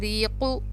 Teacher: را کے نیچے زیر ہوتا ہے تو را کو باریک پڑھا جاتا ہے